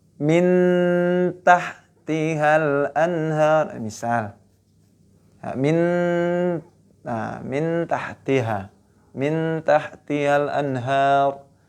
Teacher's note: min n-nya masuk ke taknya ya, kemudian dengan dengung.